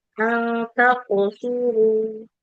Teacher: Jadi huruf qaf itu kalau sukun maka harus memantul